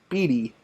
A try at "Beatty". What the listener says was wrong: You were saying Beatley with an L.